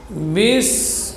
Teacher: Huruf ba di sini huruf syiddah dan jahar.